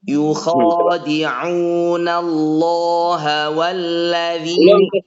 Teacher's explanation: ainnya bagus, tapi masuk ke waw keluar dari hidung.